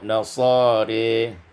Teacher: dibaca imalah fathah ra dan lam maka menjadi nasari